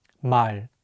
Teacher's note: The 리을 consonant is at the end of the word, so it will be pronounced as L · In ball, you put some tension in the back of your mouth to make it stronger. In Korean, the L sound is much lighter without any tension.